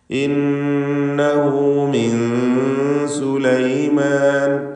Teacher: നൂൻ മുഷദ്ദദയെ മണിക്കുക. ഇന്നഹു ഹു എന്ന ഹാഉ ളമീറിന് 2 ഹറക്കത്തിൻ്റെ അളവിലുള്ള ദീർഘമേ കൊടുക്കാവൂ. മദ്ദുസ്സിലത്തി സുഗ്റ.